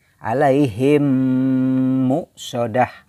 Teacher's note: yah dimasukkan alaihim nemox sudah alaihim much soda jadi caranya adalah bunyi mim ditahan kemudian di masukkan ke dalam huruf yang ada di depannya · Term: idghom Mimi